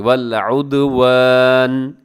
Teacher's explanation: जब वक़फ़ करेंगे तो आखिर में नून को साकिन कर देंगे